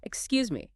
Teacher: with a rising intonation, like a question